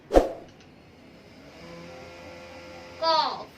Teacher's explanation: इसे हम घुमा के कॉफ पढ़ते हैं, कॉफ हलक से पढ़ते हैं, कॉफ। के की आवाज आती है और ये हमारा हिंदी का का इस्तेमाल किया जाता है।